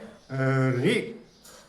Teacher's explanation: ऋ रे ये मूर्धा से होता है। तो ऋ का उच्चारण स्थान मूर्धा से है।